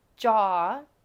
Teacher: when you say jaw your tongue is um pressed against the top of your mouth